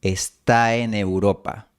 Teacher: ¿Escuchas cómo fluye la /a/ hacia la /e/?